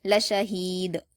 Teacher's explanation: پر یا مدہ ہے 2 حرکات کھینچ کر پڑھیں گے اور دال کی تنوین کو جزم دے کر وقف کر دیں گے تو قلقلہ کے ساتھ پڑھا جائے گا